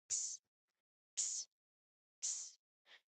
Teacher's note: this is a sound made by combining letter K and letter S sounds very quickly. So to make this particular sound, you first make the unvoiced K sound, which is formed back of the tongue, stops where it stops the air. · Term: X sound